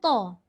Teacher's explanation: Macam mana dia boleh jadi tebal? Pangkal lidah mengangkat ke lelangit.